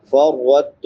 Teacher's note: فرطت را پر پڑی جائے گی کیونکہ را کے اوپر زبر ہے۔